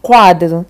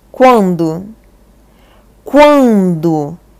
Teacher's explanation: Oral, que você não tá nasalizando nada aqui. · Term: ditongo oral